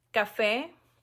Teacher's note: Café, termina con vocal, lleva acento en la E. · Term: sílaba tónica